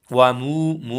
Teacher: मु को एक अलिफ के बराबर खींचेंगे। वाओ मद्दा है।